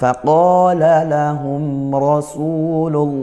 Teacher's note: lafaz Allahnya dibaca tebal karena lafaz Allah didahului harokat dhammah. Rasulullahi, ya lamnya ditebalkan, lamnya lafaz Allah.